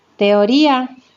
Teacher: Tenemos dos vocales abiertas, no forman sílaba, tengo que separar, se produce hiato. Y es una vocal cerrada, pero lleva tilde, por lo tanto tengo que separarla de la vocal abierta A.